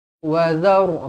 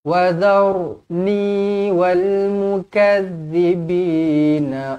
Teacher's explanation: ra dibaca tebal kerana sebelumnya berbaris atas.